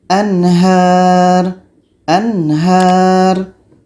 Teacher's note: Nun mati jelas, ha jelas dan tidak ada dengung.